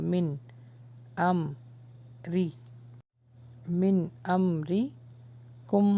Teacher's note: یہاں پہ اظہار ہو رہا ہے، غنہ نہیں ہوگا